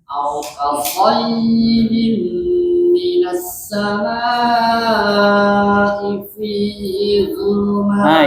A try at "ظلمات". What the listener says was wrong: Ini zu atau wo. Tebalkan zu.